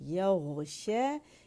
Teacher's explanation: यग़शा या बारीक गैन मोटा